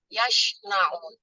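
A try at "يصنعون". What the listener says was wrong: Lidahnya hurufnya diletakkan di ujung lidah. Jangan tengah. Kalau tengah jadinya yash. Nah, itu tengah lidah.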